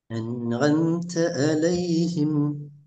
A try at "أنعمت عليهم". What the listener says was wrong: பிழையே பார்த்தீங்களா, ஒரு ஐன் சரி அடுத்த ஐன் பிழை. அன் ஆம்த சரி அலைஹிம்ங்கிறது பிழை. எப்படி அன் ஆம்த வந்துச்சுதோ அதே இடம் அதே பொசிஷன்லேருந்து அலையும் வரணும். அன் ஆம்த என்று ஐனை உச்சரிச்சிங்க தானே, அந்த ஐன் சரி. அலைஹிம்ங்கிற ஐண்ட சவுண்ட உச்சரிப்பு பிழை. காரணம் என்னென்றால் இது ரெண்டும் ஒரே இடத்துலேருந்து நீங்கள் உச்சரிக்கல.